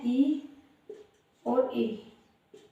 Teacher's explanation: तालव्य स्वर जो हमारे तालु से बोले जाते हैं। तालु से बोलने वाले स्वर हैं ई और ए, छोटा ई और बड़ा ई, ये तालु से बोले जाते हैं।